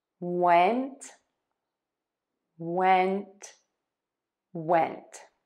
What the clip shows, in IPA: wɛnt